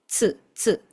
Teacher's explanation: Este tsu es literalmente una te y seguido de su